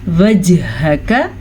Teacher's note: وجہک جیم پھر سے قلقلہ ہو رہا ہے